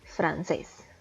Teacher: es una palabra de dos sílabas la sílaba tónica recae en la última y como si termina en ese debemos acentuar la francés ahora